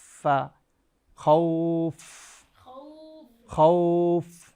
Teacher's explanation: এই ফা উচ্চারণের জায়গা হলো ঠোঁট, ওপরের দাঁত ঠোঁটের সঙ্গে লাগবে